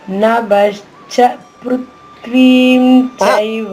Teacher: చైవ పృథ్వి అనగానే పృథ్వి అనగానే తప పొల్లు అవుతుందండి అది మీరు గమనించండి. పృథ్వి అంటే త పొల్లు అయిపోతుంది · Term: సంయుక్తక్షరం